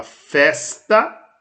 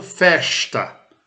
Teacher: Festa é pronunciado como se fosse um S. Mas pode ser pronunciado festa, como se fosse um CH. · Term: fonema palatal